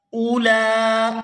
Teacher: یہاں لام کے اوپر کھڑی زبر ہے اور پھر مد ہے تو اس کو کھینچ کر ادا کریں گے